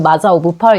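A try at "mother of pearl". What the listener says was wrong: 마더 오브 펄이죠? 이게 일본에서는 마자, 화자, 브라자 이렇게 일본에서는 덜을 잘하고 발음하더라고.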